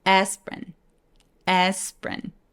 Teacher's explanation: P 위에서 R로 바로 넘어갑니다